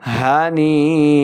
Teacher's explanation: یا مدہ بھی ہے اس کے اوپر مد بھی ہے تو ہم اس کو 4 سے 5 حرکات کے برابر لمع کریں گے